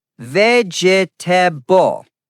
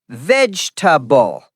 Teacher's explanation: Many students say vegetable, four syllables. Correct is vegetable, three syllables.